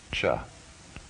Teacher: palatal the hard palate hard unaspirated